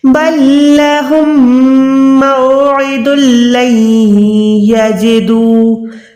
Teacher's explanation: دال کے بعد لام میں منہ سے ادا کر رہی ہوں، نون ساکن کے بعد یا میں ناک سے ادا کر رہی ہوں